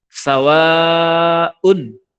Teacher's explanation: sawa itu panjang. Itu namanya kalau di tajwid mad wajib sawaun ditandai dengan seperti bendera itu.